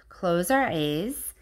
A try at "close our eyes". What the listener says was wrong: You said close our A's. I think you did.